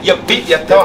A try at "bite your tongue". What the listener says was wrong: Don't say beat, I gotta bite your tongue.